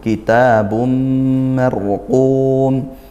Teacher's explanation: Tanwin bertemu mim dibaca masuk dan dengung. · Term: idgham bighunah